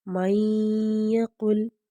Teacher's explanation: نون ساکن کی آواز کو ہم یا میں ملا دیں گے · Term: ادغام